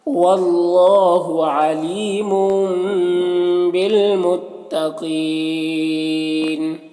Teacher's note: قاف حروف مستعلیہ میں سے پر پڑھیں گے اور یہاں پر وقف کی صورت میں مد عارض وقفی ہوگا